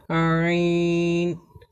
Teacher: আইন হরফকে কণ্ঠনালীর মধ্য থেকে একটু চেপে পড়তে হয়, যেমন আইন। তাহলে আমরা হামজা এবং আইনের মধ্যে পার্থক্য পেলাম যে হামজা হরফকে কণ্ঠনালীর শুরু থেকে শক্ত করে পড়তে হয় এবং আইন হরফকে কণ্ঠনালীর মধ্য থেকে একটু চেপে পড়তে হয়।